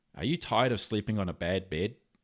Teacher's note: Our vowel sounds seem to all just blend in together, especially like the E and the A sounds.